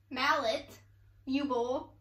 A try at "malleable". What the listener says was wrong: You don't say mallet. Yeah, like mallet, like how you say Like how you say the first part of mallet. No. You're saying U-bowl. It's malleable.